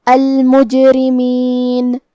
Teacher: یہاں جیم کا حکم ہے قلقلہ. قلقلہ کا معنی ہے حرف ساکن کو ہلانا، لہذا ہم جیم کو ہلاتے ہوئے یہ کلمہ کو پڑھیں گے